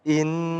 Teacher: harus dibaca dengung. Tempatnya di hidung.